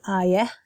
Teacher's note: So I have a softer H sound at the end